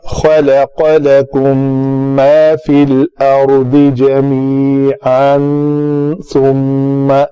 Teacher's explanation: میم ساکن کے بعد آگے میم آ رہا ہے تو آپ نے اس میم کو اس میم کے اندر ادغام کرنا ہے. اس کو کہتے ہیں ادغام شفوی.